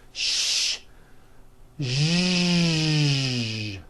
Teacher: To produce this sound, first make a sh sound, and then you add voicing. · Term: voiced SH sound